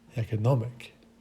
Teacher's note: the accentuation on the third syllable and also on the first syllable for economic